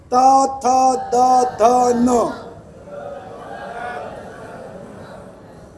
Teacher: दंत्य यानी आपकी जिबान जो है ये दांत को टच करेगी